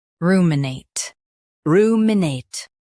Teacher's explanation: Stress roo and keep nate smooth.